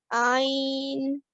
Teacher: Ain is a throat letter, and the sound of Ain comes from the middle of the throat.